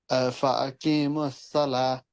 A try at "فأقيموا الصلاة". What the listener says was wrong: This ta, brother, you exchange by ha. Yes. You learn the rule of waqf at So that's why you exchange ta with